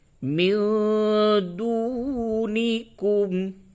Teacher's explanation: نون ساکن کے بعد دال ہے، اس جگہ پہ اخفا ہوگا